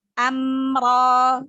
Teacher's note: Ro-nya juga mat tabi'i. Ti amro, mim sukun bertemu huruf ro, hukumnya izhar syafawi. Jadi mim sukunnya dibaca jelas tanpa gunnah. Amro ya. Jadi hanya ditahan berikan sifat bainiyah pada mim sukunnya saja, tetapi tidak digunnah ya, tidak digunah, tidak ditahan.